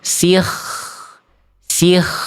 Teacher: Ketebalannya akan berkurang apabila kondisi kho dalam kho sukunnya ini diawali oleh kasroh.